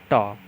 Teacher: कठोर तालु के मध्य का भाग मूर्धा कहलाता है। जब जिह्वा की उल्टी हुई नोक का निचला भाग मूर्धा से स्पर्श करता है तो ऐसी स्थिति में उत्पन्न जो ध्वनि होती है उसी को बोलते हैं मूर्धन्य व्यंजन